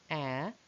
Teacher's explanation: in air the tongue front is very far from the palette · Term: open